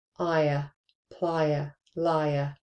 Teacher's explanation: You hear that y sound in there. Now this isn't a diphthong. This is a diphthong plus a monothong. So then you've got 2 syllables.